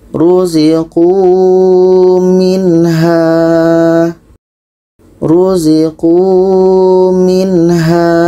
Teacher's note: Jadi nun mati bertemu ha ini dibaca tidak dengung.